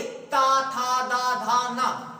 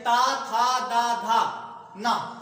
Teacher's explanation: हमारी जीभ सीधे दांतों के भाग पर अर्थात दांत पर ही जा करके ये हम बोल सकते हैं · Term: दंतव्य